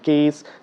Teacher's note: the stream of air is coming from inside and there is a friction which is happening between the alveolar Ridge and your tip of the tongue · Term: hissing sound